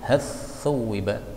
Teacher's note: Ini boleh dibaca idgham menjadi hathuwiba, maka lamnya lebur menjadi tha.